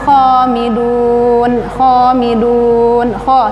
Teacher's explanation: kho suaranya agak kasar, kho hurufnya tebal